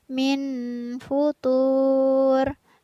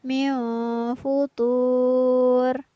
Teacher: jika kita membaca minhu tour tapi yang benar adalah Meow future nun sukun nya harus dibaca samar atau tidak boleh dibaca jelas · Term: ikhfa